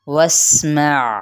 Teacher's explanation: سین پہ سیٹی اور عین کی بھی آپ نے واضح طور پہ آواز نکالنی ہے